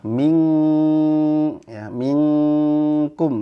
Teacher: tadi nun sukun ketemu Kaf itu ikhfanya full ke hidung ya